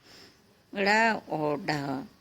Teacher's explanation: जब जिह्वा का अग्रभाग परिवर्तित होकर तालु का स्पर्श कर मुख द्वार को झटके से खोलता है, उस समय जो ध्वनियाँ उत्पन्न होती हैं वे उत्क्षिप्त ध्वनियाँ कहलाती हैं। ड़ और ढ इस तरह के उदाहरण हैं।